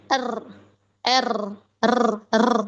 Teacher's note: Tambahannya yaitu takrir, yang pertama ada getaran di area kepala atau ujung dari lidahnya. Tempat keluarnya tadi ya, dari ujung itu, dia ada getaran R, R, R, ya ada getaran.